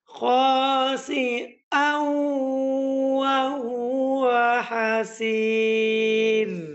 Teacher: রা যদি ওয়াকফ অবস্থায় সাকিন হয় এবং তাহার পূর্বে ইয়া সাকিন হয় তাহলে ওই রা বারিক করে পড়তে হয়